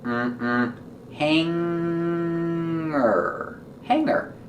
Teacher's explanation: We don't say hanger. We don't make a hard G sound for the G. We pronounce it hanger with a sound in our nose.